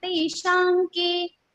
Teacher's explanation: Nasal consonant for the Ka Varga is Anga. So Anuswara's sound will be like Anga. Teshanke. We will not say Tesham ke.